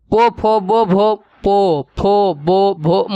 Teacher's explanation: आपका होठ जो है कि सटेगा और खुलेगा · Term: ओष्ठ